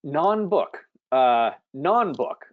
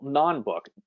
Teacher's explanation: we put the stress on the first syllable